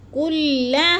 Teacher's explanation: حروف مدہ کے بعد حمزہ اسی کلمے میں آ گیا ہے تو مد متصل کو 4 حرکات کے برابر ہم نے لمبا کر کے پڑھنا ہے۔ کلھا، ہا کو بھی لمبا کرنا ہے تھوڑا سا، کیونکہ ادھر الف مدہ ہے